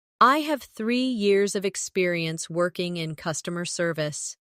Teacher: Emphasize 3 years and customer service to highlight your strengths.